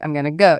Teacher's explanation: if you say it completely flat, I'm gonna go, it just sounds off, distant, maybe even bored or annoyed